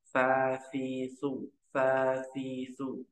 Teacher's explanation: sa ujung lidah bertemu ujung gigi seri atas